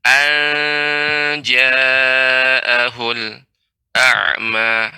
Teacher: Dan jim termasuk huruf istifal. Jadi tidak dibaca dengan tebal, tidak ang, tapi anja dengan ya, dibuka sedikit ya rahangnya anja, karena jim bukan huruf yang isti'la. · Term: ikhfa